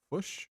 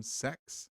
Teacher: Fish tries to become fush, six tries to become sex, etc. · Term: vowel shifting